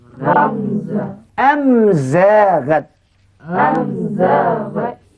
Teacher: bunyi mim ni terang nyata sebab dikeluarkan pada dua bibir